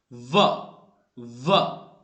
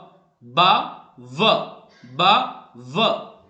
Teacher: व दांत और ओष्ठ दोनों की आप हेल्प ले रहे हैं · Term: दंतोष्ठ